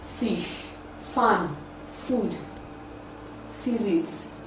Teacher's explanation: It is produced with the upper teeth and the lower lip. It is a voiceless, labiodental, fricative sound. It can be realized at the initial, middle, and final positions of English words.